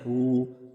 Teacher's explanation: ہو تھوڑا کھینچیں گے کیونکہ واو پر جزم آ جائے گا، اور واو سے پہلے والے حرف پر اگر پیش ہو، ٹھیک ہے نا، اور جزم آ جائے تو ہم کھینچ کے پڑھتے ہیں ہو۔